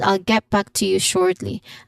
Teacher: Shortly has stress on the first syllable with a long or sound.